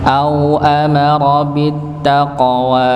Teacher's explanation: Au amara, bukan au amara, tidak dipanjangkan. Amara tidak panjang, ra-nya ditebalkan.